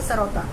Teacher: जब दांत में सटता है तो दंत सा हम लोग बोलते हैं